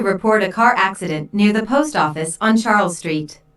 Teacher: notice how the keywords car accident post office in Charles Street are stressed